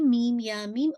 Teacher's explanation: तो आपने क्या करना है, मीम को आपने इंशाल्लाह इसको मीम को आपने पूरा 6 काउंट तक स्ट्रेच करना है